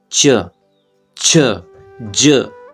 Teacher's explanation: स्पर्श तो है ही च उसके बाद संघर्ष भी कर रहा है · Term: स्पर्श संघर्षी